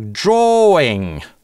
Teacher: Без linking [w]. Потому что после долгого /oː/ его не бывает.